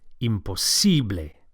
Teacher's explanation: Don't forget to stress the sible.